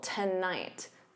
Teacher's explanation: The first syllable is unstressed. So to becomes that unstressed t. And then night is your stressed syllable. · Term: syllable stress